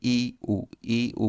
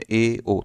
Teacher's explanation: ई ऊ बोलेंगे तो बहुत कम मुंह खुलेगा, और अर्धसमृद्ध में ए ओ थोड़ा इससे ज़्यादा खुलेगा